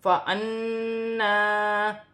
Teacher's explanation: نون مشدد ہے، نون مشدد میں غنہ ہوگا اور کھڑی زبر بھی ہے، 1 الف کی مقدار کھینچ کر بھی پڑھا جائے گا۔